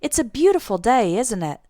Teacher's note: when we use the question tag in this way our intonation goes down at the end instead of going up like a normal question